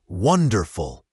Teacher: Wonderful has the stress on the first syllable